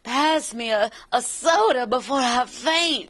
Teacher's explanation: she talked all breathy like Jessica Rabbit all the time